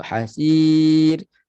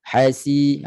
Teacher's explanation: Jangan sebut hasir, itu tenggelam. Hasi, bunyi jelas, bunyi desiran sin, bunyi macam ular. Kemudian hasir, kita mati pada ra jadi man'ariw disukun, ada 3 wajah, 2, 4 atau 6 harakat. · bila sebut sifat safir kena kuatlah bunyi dia, tak boleh tenggelam. Jangan sebut hasir, itu tenggelam.